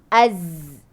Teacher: Zai dekat belakang gigi bawah. Hujung lidah, belakang gigi bawah. Dan dia punya sebut dia, bunyi dia az.